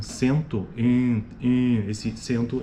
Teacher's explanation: sento é uma vogal nasal em meio de palavra